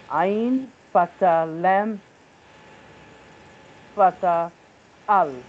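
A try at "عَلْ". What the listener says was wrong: Nam sakin.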